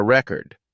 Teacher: When the stress is on the first syllable, record, it's a noun like in I bought a record. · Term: stress on the first syllable